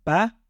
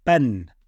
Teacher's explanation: because it's the tanween, because it's been doubled, then it's telling us it must end with an N sound. So it becomes ben.